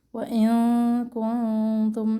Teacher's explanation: دونوں نون ساکنہ پر اخفا ہوگا اور باریک اخفا ہوگا